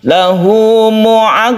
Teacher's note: ini nun mati menjadi mim mati itu cara membaca iqlab